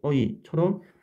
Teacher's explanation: 그러면 옆에 예시를 보면 에 같은 경우에는 현대에서는 움직이지 않고 소리가 나지만 중세에서는 여기 나와 있는 것처럼 단모음 어에서 반모음 제로 움직이면서 나는 소리였다라는 겁니다. 어에서 반모음 이로 어이처럼 빠르게 움직이면서 나는 소리였다라는 거죠. 정확한 소리는 알 수 없지만 중세에는 이 에라는 모음은 반모음 제로 끝나는 이중모음이었다는 게 중요한 사실입니다.